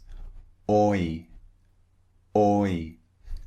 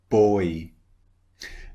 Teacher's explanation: It starts round and it finishes slightly wide.